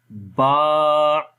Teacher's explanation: دونوں ہونٹوں کے تر حصوں سے با ادا ہوتا ہے۔ جب ہم با کو پڑھیں گے تو ہمیں فیل ہوگا کہ یہ تر حصے، یعنی کہ دونوں ہونٹوں کا اندر والا حصہ، کیونکہ وہ تر ہوتا ہے۔